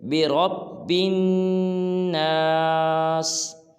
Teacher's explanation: اب دیکھیں جو را کے بعد با ہے نا، جس کے اوپر جو مشدد ہے، جس کے اوپر شد ہے، اس با کو آگے نون ہے، اس نون کے ساتھ ملانا ہے، نہ الف پڑھنا ہے نہ لام پڑھنا ہے، بلکہ با کو نون کے ساتھ ملانا ہے، جیسے برب۔ جب با کو نون کے ساتھ ملائیں گے تو غنہ بھی کریں گے، جیسے برب الناس۔